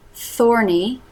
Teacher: tongue through the teeth for the th